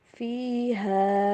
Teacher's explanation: فِيهَا، ایک تو حارف زبر ہا ہے، اس کو تو آلریڈی ایک الف یعنی کہ 2 حرکات کے برابر لمبا کیا جاتا ہے، لیکن اوپر مد بھی آ رہی ہے تو مزید لمبا کریں گے